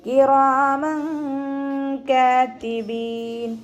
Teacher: തെൻവീനിന് ശേഷം ഇഖ്ഫാൻ്റെ അക്ഷരമായിട്ടുള്ള കാഫ് വന്നു. അപ്പോൾ തെൻവീനിനുള്ള നൂനിനെ മറച്ച് വെച്ചിട്ട് മണിച്ചോതി കൊടുക്കുക കേട്ടോ. · കാഫ് ചെരിച്ചിട്ട് ഉച്ചരിക്കാൻ ശ്രദ്ധിക്കുക. കാഫിൻ്റെ കൂടെ അലിഫ് സോയിറയുണ്ട്. 2 കൗണ്ട് നീട്ടിക്കൊടുക്കുക. അവസാനത്തിൽ മദ് ആരദിൽ വഖഫ് ചെയ്യുമ്പോൾ 2, 4, 6 ഹർക്കത്ത് നീട്ടി വഖഫ് ചെയ്യും.